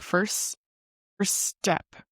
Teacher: We have the his effect where you're not really pronouncing that T at the end of first